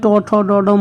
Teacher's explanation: বলা হয় মূর্ধন্য বর্ণ, কারণ জিভের ডগা মূর্ধাতে আঘাত করে